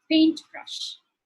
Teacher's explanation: In the compound words, the rules of nouns and adjectives are the same as even if it isn't a compound word. So the stress would be on the first syllable